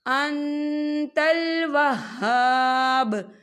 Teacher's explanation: نون ساکن کی آواز کو ناک میں چھپائیں گے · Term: اقفا